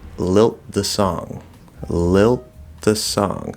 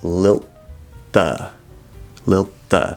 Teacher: It's actually not a dental t, it's a dental d. Sorry. Dental d cuz it's a voiced th, so it's a dental d.